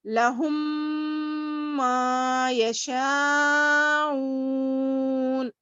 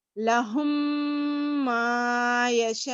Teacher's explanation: یہ میم کو پھر میم آ رہا ہے تو وہ میم سے ملا کر ہم غنہ کریں گے، ناک میں تھوڑی دیر آواز کو روکیں گے.